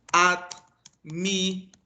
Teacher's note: admiradores, la sílaba tónica es do